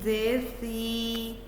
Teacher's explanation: सीन ज़ुबान के सामने के हिस्से को नीचे के दांतों के पीछे रखकर सीटी की तरह आवाज़ निकाली जाती है